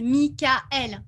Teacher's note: on prononce le A et le E différemment, enfin séparément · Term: tréma